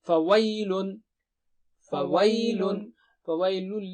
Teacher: فویل وی جو ہے یہ نرم یا ہے، اس کو ویل نہیں پڑھیں گے